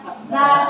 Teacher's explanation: Ba, tersenyum, kemudian dia keluar dari kedua bibir. Jadi bibir atas sama bibir bawah harus dirapetin.